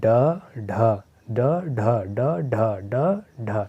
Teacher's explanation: ड और ढ दोनों सघोष हैं। ड ढ ड ढ ड ढ ड ढ, यानी कि इसमें स्वर तंत्रियों में कंपन हो रहा है